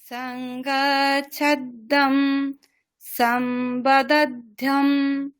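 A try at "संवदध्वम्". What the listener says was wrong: হ্যাঁ, ধ্যম নয়, ধ্বম। ধয় বয় আছে। ধ্বম, এরকম উচ্চারণ করবেন। ধ্বম। সংবাচ্ছধ্বম বদধ্বম সংবদধ্বম।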